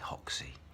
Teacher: the Brazilians say hoxsey because they don't pronounce the R